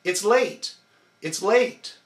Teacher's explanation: It's late. And again, we put the emphasis, we contract, only on the big word late.